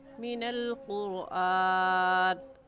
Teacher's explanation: क़ुरआन में रा साकिन से पहले क़ाफ है जिसके ऊपर पेश है, और कायदा है कि रा साकिन से पहले पेश आ जाए तो उस रा साकिन को पुर यानी मोटा करके पढ़ते हैं। तो ऐसे कहेंगे मिनल क़ुरआन।